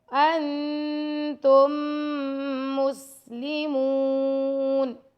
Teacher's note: میم کو واو مدہ ساتھ اس کے آ رہا ہے تو میم کو 2 سیکنڈ تک لمبا کریں گے